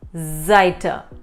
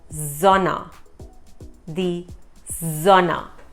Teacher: It's somewhere between a S and a Z.